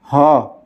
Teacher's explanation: कंठ वर्ण है, महाप्राण भी है और घोष भी है